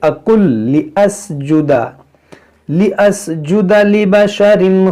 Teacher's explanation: یہ نون جو ہے لام میں داخل ہو جائے گا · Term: ادغام